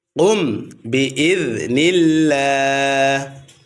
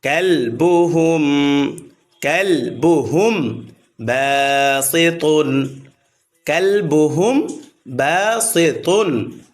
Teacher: মিম সাকিনের পর বা আসিলে উক্ত মিম সাকিনকে অস্পষ্ট করিয়া পড়িতে হয়। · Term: ইখফা